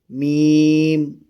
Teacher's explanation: میم دونوں ہونٹوں کی بیرونی تری کے ملنے سے